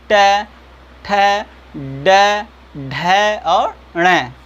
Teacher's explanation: बोलिए ट, ठ, ड, ढ और ण। ठीक है, आप देख पा रहे हैं जिह्वा मुड़ जा रही है, इसी मुड़ने के कारण उसका उच्चारण स्थान क्या हो जाएगा, मूर्धा हो जाएगा।